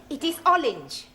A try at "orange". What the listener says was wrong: You really must work at those R sounds. Try saying, round the rugged rock, the ragged rascal ran.